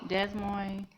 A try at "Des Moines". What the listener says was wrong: It's Des Moines. I hate when people say it wrong. It's Des Moines. The S is silent. Oh my God, that irritates me so much.